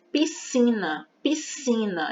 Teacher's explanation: Ela não vai colocar a letra S. Porque a gente mal escuta a letra S na palavra piscina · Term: dígrafo SC